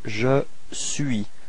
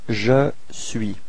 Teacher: you can notice that the final S is not pronounced